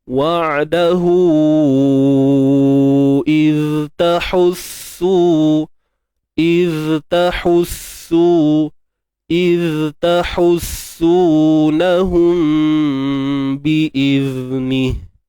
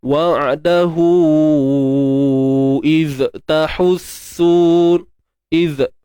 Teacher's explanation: Huruf zal yang sukun ni kita pastikan rakhawah lah berlaku. Rakhawah ni apa? Suara yang mengalir.